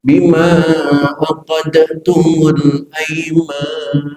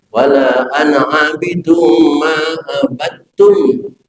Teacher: Bukan lagi dibaca abadtum, tapi dibaca abadtum. Dalnya masuk ke huruf ta, maka timbul tasdid di huruf ta, itu namanya idgham mutajanisai.